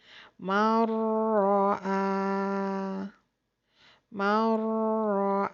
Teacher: and the rule is when nunzakena or tanwin followed by ra the sound of the noon will be merged with ra and read without na or nasal sound